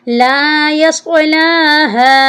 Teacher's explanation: क्योंकि लाम के ऊपर खड़ी ज़बर है, इसको हम एक अलिफ की मिकदार के बराबर लंबा करेंगे · और हा जो है, हा के साथ हमज़ा है, हमज़ा के ऊपर छोटी मद है, यानी मद्दे मुनफिसल, इसको हम 2 से 2.5 अलिफ की मिकदार के बराबर लंबा करके पढ़ना है